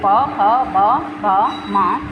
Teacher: जिनका उच्चारण दोनों ओठों की सहायता से होता है